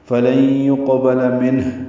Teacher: با لام جلدی پڑھیں گے، منہ میں نون ساکن کے بعد ہانی کی وجہ سے اظہار ہے، اگر یہاں پہ وقف کریں جو کہ جائز ہے وقف کرنا، جیم کا وقف ہے، فلن یقبل منہ، ہا ساکن ہو جائے گی اور اس پہ ہمس ہوگا